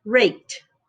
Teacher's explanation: Now, in the word rake, k, k is the sound, is the last sound. You don't feel any vibration, so it's unvoiced. So if it's unvoiced, the ed makes the t sound.